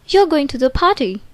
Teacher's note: forms like you're going to the party is a question if delivered in a rising tone